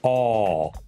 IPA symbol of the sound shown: ɒ